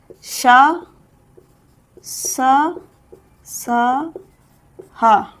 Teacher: आप स्क्रीनशॉट ले लो फिर हम साफ करते हैं। व्यंजन वे व्यंजन जिनके उच्चारण में गर्म या उष्म वायु बाहर आती है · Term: उष्मीय व्यंजन